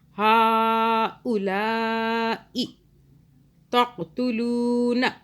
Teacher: ای کو نہیں کھینچنا